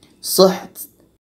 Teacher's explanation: Ha di tengah-tengah tenggorokan, sedangkan ta berangin.